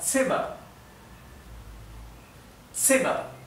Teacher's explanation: La Z en alemán siempre se pronuncia T, T, TS.